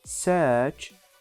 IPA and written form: sɜːʧ (search)